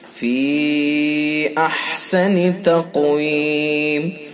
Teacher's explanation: قاف کو پر کر کے پڑھیں گے، پر یعنی موٹا، اور قاف کے اندر قلقلہ بھی کیا جائے گا۔ دیکھیے 5 حروف قاف، طا، با، جیم، دال، یہ جب ساکن ہوتے ہیں تو ان کے اندر قلقلہ کیا جاتا ہے۔